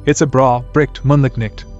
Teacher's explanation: they still pronounce the gh, phoneme in words like bright, moonlight, and night. Note, it's spelled phonetically as ch.